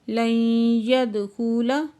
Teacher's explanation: لن يدخل، نون ساکن کے بعد یا مشدد ہے، ادغام جار معلوم مال غنہ ہو رہا ہے اور دال ساکن پہ قلقلہ ہو رہا ہے